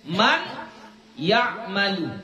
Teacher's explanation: Memasukkan nun ini ke dalam huruf ya. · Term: idgham bi ghunnah